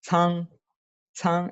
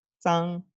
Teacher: Fíjense como con C expulso aire, con Z no, con Z san, con C san, san, estoy expulsando el aire.